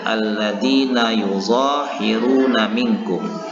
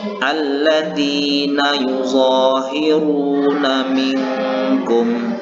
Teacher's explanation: Pada kalimat ini terdapat huruf ro yang berbaris dhammah atau berbaris depan, maka ro ini harus dibaca secara tafkhim atau tebal.